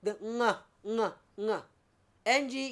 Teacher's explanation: the ng sound is called a velar nasal